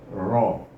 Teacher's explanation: hujung lidah akan bergetar semasa menyebutnya. Iaitu ra. Letak hujung lidah ke atas, bertentangan dengan gusi gigi kacip atas, keluarlah huruf ra.